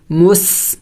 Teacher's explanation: سین سٹی والے حروف میں سے ہے، پڑھتے وقت منہ سے سٹی کی آواز نکلنی چاہیے